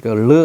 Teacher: 반설음 혀 소리인데 반만 난다 르 하면 혀가 한번 탁 치고 나오죠